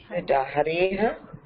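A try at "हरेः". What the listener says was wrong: Harehe. Harehe. Visarga is not her. It is not her. It is not Hareha.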